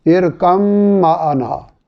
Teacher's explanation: یہ با اور میم دونوں کا مخرج ایک ہے